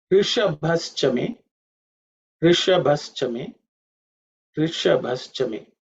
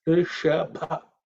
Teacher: you pay attention to the sh, which is cerebral sh, and bha, which is the fourth letter in the pa varga, which has to be aspirated